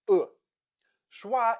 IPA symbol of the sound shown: ə